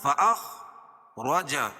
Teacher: خا کو پر پڑھیں گے، وا کو پر پڑھیں گے، اس لیے کہ وا کے اوپر زبر ہے.